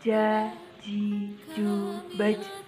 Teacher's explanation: Selanjutnya melafalkan huruf ja. Huruf ini dilafalkan dengan menyentuhkan tengah lidah kita ke daerah langit-langit.